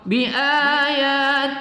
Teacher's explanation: tillah ini kita baca tarqiq ya, tidak kita baca tebal karena diawali oleh huruf berbaris kasrah, berbaris di bawah.